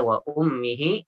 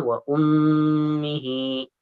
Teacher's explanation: Mim sudida, mim guna. Oke, gunnah ya, mim bertasydid. Dibaca 2 harakat. Wa ummihi ya, dibaca 2 harakat.